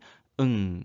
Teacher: 그래서 입술이 닿았다 떨어지는 무, 그 다음 혀 끝과 윗잇몸이 닿았다 떨어지면 나는 잇몸 소리 느, 그 다음 혀 뒤와 여린 입천장이 닿았다 떨어지면 나는 응 소리입니다. 그래서 이 소리는 코 안으로 공기가 가면서 코 안이 울려서 나는 소리가 되겠고요.